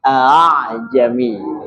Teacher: suara hamzah kedua dibaca samar antara hamzah dan alif. Kan tulisannya a'jami. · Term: tashil